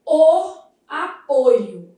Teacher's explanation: Nesse substantivo, a gente vai ter uma vogal o fechada.